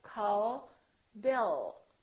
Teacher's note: so the American L isn't released